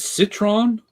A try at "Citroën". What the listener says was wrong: Citroën. Citroën. You have to pronounce the E separately because it has a umlaut.